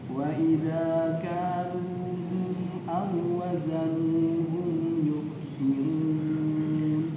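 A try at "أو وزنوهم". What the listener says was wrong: Aw wazanuhum. Ya, jadi di sini fokus makhrajnya ada di antara dua bibir, mencucu. Jadi membacanya bukan au. Wawu yang pertama yaitu wawulin tidak usah dibaca. Dalam pelafalannya hilang karena idghamnya idgham kamil. Di situ ditandai ada tasydid pada wawu yang kedua. Coba perhatikan, ada wawu tasydid. Ya, yang kedua wawunya bertasydid.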